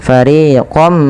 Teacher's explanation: Pada lafal jun panjangkan 2 harakat, ri juga 2 harakat, dan kemudian ketika fariqam minkum ini tidak dibaca dengan fariqon minkum, tapi suara tanwinnya awalnya fariqon ketemu mim, masukkan fariqam ya, sembari kita tahan suara mimnya. Dan inilah yang dinamakan dengan idgham bi gunnah.